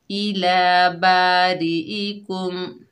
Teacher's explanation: हमजा के नीचे जेर है, बगैर खींचे पढ़ेंगे ई। काफ के ऊपर पेश है, आगे मीम साकिन है, काफ को मीम साकिन से मिलाएंगे, यहाँ पर मीम का इजहार होगा